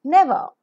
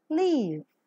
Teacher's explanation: for um is voiced because the vocal cords vibrate labio Dental the lower lip and the upper teeth come close to each other